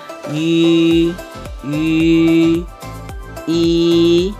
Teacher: U yang ada titik dua ini bacanya I, seperti I, seperti I. Tapi I ini bibirnya dibulatkan, bunyinya tetap I, tapi bibir dibulatkan jadi bunyinya I, I, I.